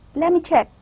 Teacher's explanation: I am almost omitting ta sound and mixing it with the next sound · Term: regressive assimilation